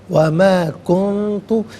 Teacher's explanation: نون ساکن کو اخفا کے ساتھ پڑھیں گے. اخفا کہتے ہیں ناک میں آواز لے جا کر گنگنانا. وما کنت، یہاں پر بھی نون ساکن کے بعد تا حرف اخفا ہے تو نون ساکن کو اخفا کے ساتھ پڑھیں گے.